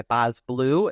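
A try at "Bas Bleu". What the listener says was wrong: You don't pronounce the S. It's a French.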